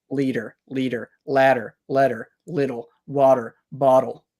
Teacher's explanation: usually make a clear T liter or a clear D leader it's just your tongue goes up and down and it's called a flap or a tap